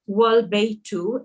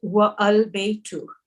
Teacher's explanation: For example, al-baytu, here the A is pronounced, but if it is preceded by wa, meaning and, the A is dropped and the phrase is pronounced wal-baytu and not wa al-baytu. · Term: hamzatul wasl